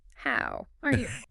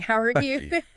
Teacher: Using a nice friendly rising intonation, maybe lifting your pitch up a bit towards the end, perhaps on are you. · Completely flat, like a robot. No pitch change, no rhythm. Monotone. How are you?